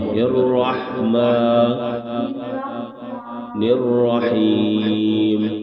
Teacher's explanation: را دونوں را موٹی کریں